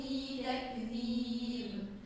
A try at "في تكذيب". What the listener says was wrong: في تكذيب. مو في تك همس مش قلقلة. تك هي همسة. تك تك هذا إذا في تكذيب.